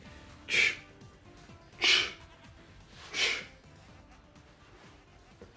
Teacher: we start by saying the letter t, but as we get close to releasing the stop, we morph it into a fricative. We hold it in the open position as a fricative. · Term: affricate